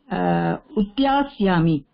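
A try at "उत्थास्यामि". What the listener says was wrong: உத்யா நாஸ்தி,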